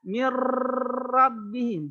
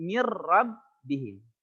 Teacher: bertemu dengan salah satu huruf idgam bilagunnah yaitu lam dan ra cara membacanya adalah memasukkan ke huruf di depannya tanpa disertai dengung